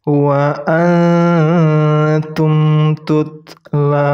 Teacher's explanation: Ingat harus didengungkan 3 harokat.